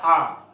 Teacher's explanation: चाहे ह्रस्व हो या दीर्घा हो, आ का उच्चारण स्थान कंठ होता है। ये जो गले में कंठ होता है, ये हमारी आवाज जो आती है कंठ में टकराती है, तब हम आ का उच्चारण करते हैं।